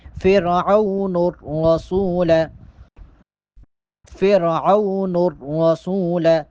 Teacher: نون کو را کے ساتھ ملائیں گے. فرعون اگر نون کے آگے لام پڑھیں گے تو وہ غلط ہے، درست نہیں ہے، بلکہ یہاں پر نون کو را کے ساتھ ملائیں گے.